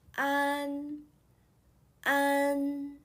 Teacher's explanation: you need to produce the ah sound followed by the nasal this sound is similar to the second sound in hand please